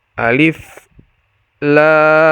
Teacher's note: dibaca Alif satu harakat ro dibaca Dua harakat sementara lam dibaca 6 harakat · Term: mad lazim Harfi mukhaffaf